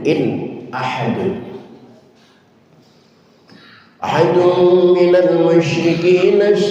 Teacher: nun mati ketemu hamzah hukumnya idhar idhar Artinya jelas. Jelaskan suara nunnya.